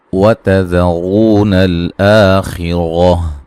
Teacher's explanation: ذال کو نرم ادا کرنا ہے اور را کو موٹا ادا کرنا ہے، را کے اوپر پیش ہے، واو مدہ ہے، نل آ مد اصلی ہے، خیرہ خا کو موٹا ادا کریں گے، را کو بھی موٹا ادا کریں گے۔